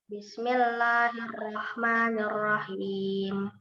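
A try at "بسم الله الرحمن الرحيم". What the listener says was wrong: Bismillahirrahmanirrahim. Ra-nya tebal ya. Bismillahirrahmanirrahim. Hati-hati jangan diseret ya ra-nya. Hirah. Hati-hati. Hirah. Hati-hati jangan diseret.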